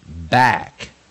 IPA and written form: bæk (back)